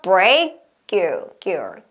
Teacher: 자, 그 다음에 break your 원래 K 사운드 다음에 자음 넣으면은 살짝 스탑 사운드이기 때문에 끊어지는데 K 다음에 이렇게 Y가 나오는 경우 같이 많이 소리가 이어져요. 그래서 이때 K 사운드가 된 소리가 나올 수가 있어요.